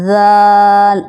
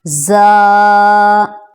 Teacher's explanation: اب اس کی آواز سے ہی پتہ چل رہا ہے کہ یہ سخت لیٹر ہے اور سیٹی والا ہے، زا زا۔ پہلے والا ہم نے نرمی سے بولا تھا، ذال، اب یہ سخت، زا۔